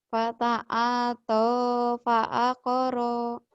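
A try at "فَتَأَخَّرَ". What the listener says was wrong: Ronya pendek ya. Fata'ata fakoro. Coba lagi.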